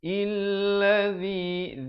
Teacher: Zi di hujung lidah.